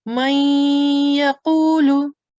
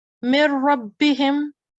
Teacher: we will put the nasal sound, prolong it for 2 seconds